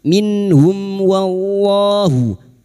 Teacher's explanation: lam jalalah yang didahului fathah dibaca tafkhim